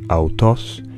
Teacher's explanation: the ancient Greek word αὐτός has a high pitch on the last syllable, while the word άτονος has a high pitch on the first syllable. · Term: pitch accent